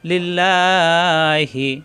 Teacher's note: আল্লাহ শব্দের ডানে জের আসছে এজন্য আল্লাহ শব্দ লা হবে ল হবে না লিল্লাহি ওয়ার রাসুল ওয়ার রয় তাসদিদ র দুইবার র সু শক্ত